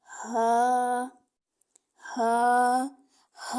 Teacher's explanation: हमारे हल्क का सबसे निचला हिस्सा है वहां से अदा होता है और यह हरफे हल्क में से है ह फिर आगे है · ہا جو ہے یہ حلق کے نچلے، جو ہمارے حلق کا سب سے نچلا حصہ ہے وہاں سے ادا ہوتا ہے، اور یہ حروف حلقیہ میں سے ہے، ہا۔